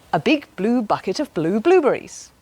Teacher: you put your lips together and you force air out but use your voice box to make a voiced sound